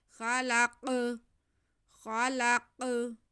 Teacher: وَخَلَقْنَاكُمْ وخلقناکم، جی خا پہ زبر ہے، آگے لام پہ بھی زبر ہے، کھینچنا نہیں ہے، لیکن اس کے بعد ہمارے پاس قاف ساکن آ رہا ہے۔ قاف حروف وہ حروف قلقلہ میں سے ہے، اس لیے ہم اس کی آواز کو تھوڑا ہلا کے پڑھیں گے۔